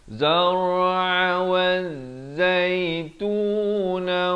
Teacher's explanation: Ha beri kasrah naik di atas zai yang bersabdu. Di sini alif lam syams ya. Sekali lagi ya, lamnya tidak dibunyikan